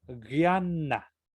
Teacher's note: la palabra guiana se pronuncia una consonante gutural con otra consonante que es dental, que es la N, ¿no?